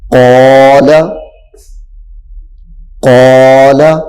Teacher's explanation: اب یہاں پہ الف ہے، قاف، الف زبر قا، یہاں پہ الف موٹا ہو گیا ہے اس کے ساتھ. کیوں کہ الف سے پہلے والا حرف جو ہے وہ موٹا ہے، حروف مستعلیہ میں سے ہے، وہ پر ہے یعنی موٹا ہے، تو یہاں پہ الف موٹا ہو جائے گا. قال، قال.